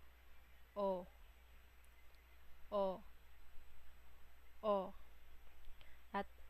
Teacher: ang O ay gitna at likod ng dila